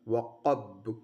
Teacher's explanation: ان حروف کو ادا کرتے وقت آواز ان کے مخرج میں ایسی بلندی اور زور کے ساتھ ٹھہرتی ہے کہ سانس جاری رہنا بند ہو جاتا ہے